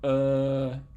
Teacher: the lowest resonant frequency of an open tube of length 17 and 1/2 centimeters is 500 Hertz that's what we get for the vowel schwa